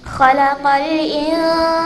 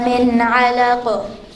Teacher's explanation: for إِنسَانَ, I didn't pronounce the noon clearly because it's إِخْفَى. Whereas for مِنْ عَلَقُ, I pronounced it clearly because it's إِظْهَار.